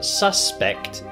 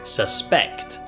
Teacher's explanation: So SUSpect is a noun but with a bit of a different word stress we have the word susPECT